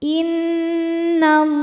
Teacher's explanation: Lam pada lafaz Allah atau lam jalalah dibunyikan secara tafkhim sebab huruf sebelumnya berbaris fathah, maka dibacanya tebal.